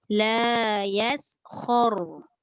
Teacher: Jangan pula khor. Jangan muncung bibir.